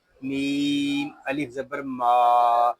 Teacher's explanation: میم کو ہم ایک الف تک کھینچ کر پڑھیں گے، یہاں الف مدہ ہو رہا ہے۔